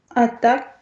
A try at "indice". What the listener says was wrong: Только я не слышу носа в начале, как будто бы. Indice.